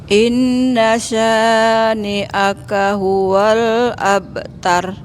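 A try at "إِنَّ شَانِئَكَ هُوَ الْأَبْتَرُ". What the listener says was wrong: Abtar agak dinaikin suaranya.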